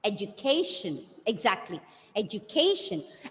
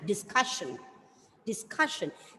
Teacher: the stress should be given on the penultimate syllable, second last